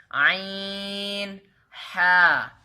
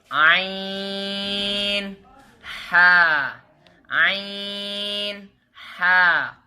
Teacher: یہ حلق کے درمیان والے حصے سے ادا ہوتے ہیں